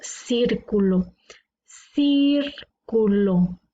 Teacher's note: círculo tiene la sílaba tónica en la antepenúltima por lo tanto es una palabra esdrújula y le sabemos que